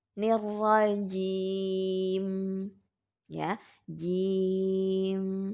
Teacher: mim yang akan kita wakafkan ya akan menjadi sukun, ini bersifat tawasud. Maka dialirkan sedikit